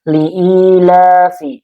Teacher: Karena ada ya sukun sebelumnya kasrah dibacanya dua harakat. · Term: mad tabi'i